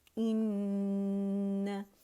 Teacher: इन्ना, ठीक है, हमज़ा और उसके नीचे कसरा है, इन्ना, और नून की आवाज़ लंबी नहीं होगी, हम ऐसे नहीं पढ़ेंगे इन्ना, नहीं, इन्ना।